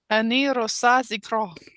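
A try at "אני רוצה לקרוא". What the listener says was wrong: All right, likro, likro. Ani rotsa likro. Ani rotsa likro. Rotsa. No L. And then the last one is likro. There is an L in the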